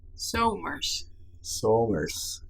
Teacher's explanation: se pierde la Z porque no se puede pronunciar los dos bien